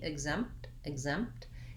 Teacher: you can go right from the m to the t you just don't want to hold your m for a long time